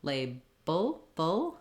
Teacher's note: tongue is Lifting for the D to the L lay Bo I'm just closing my lips for the B but still using that dark L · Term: dark L, syllabic L